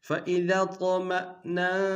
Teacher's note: طا کو موٹا ادا کریں گے، قلقلہ ہے قلقلہ بھی کریں گے